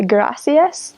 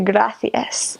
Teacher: So it's more of that th sound. Anytime there's the s sound, if it's a C or a Z, they do the th sound instead.